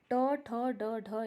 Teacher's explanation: ये हो जाएगा आपका मूर्धन्य। ट, ठ, ड, ढ, ये आपका जो है मूर्धन्य में आ जाता है।